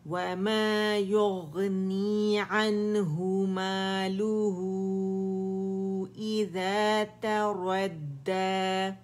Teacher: یہاں مد صلہ بن رہی ہے لیکن کبرا بن رہی ہے کیونکہ یہاں پہ ہائی ضمیری کے بعد ہمارے پاس حمزہ آ رہا ہے. 4 to 5 کاؤنٹ سے کھینچیں گے.